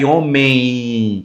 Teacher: Agora já homem tá vendo que parece que traz o I, o M, o M se torna um I nasalizado